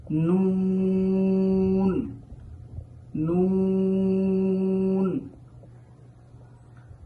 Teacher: এই নুনের মাখরাজটি হচ্ছে জিহ্বা আগা সামনের উপরের যে দাঁতগুলো রয়েছে তার গোড়া সংলগ্ন তালুর সাথে অর্থাৎ রেখাযুক্ত যে তালুটি আছে সেখান থেকেই নুন নুন ওয়াও এখানে